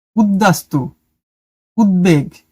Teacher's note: উত উপসর্গের সঙ্গে বফলা যুক্ত হলে ব এর উচ্চারণ বহাল থাকে।